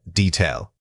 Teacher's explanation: Many speakers incorrectly substitute a long vowel sound here. Remember that the correct pronunciation requires keeping that first syllable quick and unextended.